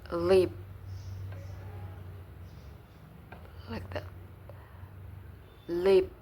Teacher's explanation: This manner of articulation produce consonant sounds by contacting the tip of the tongue onto the alveolar ridge, so that the air passes through both sides of tongue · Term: laterals